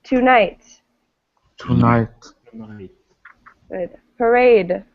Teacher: we're going to look at words where the stress is at the end of the word